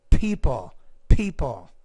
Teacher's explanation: when you pronounce that P you have to pronounce it with a lot more air